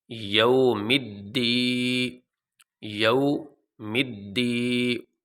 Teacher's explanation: الف ساکن سے پہلے زبر آ جائے، واو ساکن سے پہلے پیش آ جائے اور یا ساکن سے پہلے زیر آ جائے تو ان کو حروف مدہ کہتے ہیں، اور حروف مدہ کو لمبا کیا جاتا ہے۔ تو اب یہاں پہ یا ساکن سے پہلے یہ زیر آ گئی تو یہ حروف مدہ میں سے ہے، اور حروف مدہ کو لمبا کیا جاتا ہے